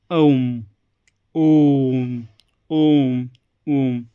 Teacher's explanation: तीन मात्राओं का समय लग रहा है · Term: प्लुत